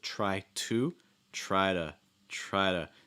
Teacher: So like try to, and notice that that O in to gets reduced to like a schwa sound. It's like instead of to, instead of try to, try to.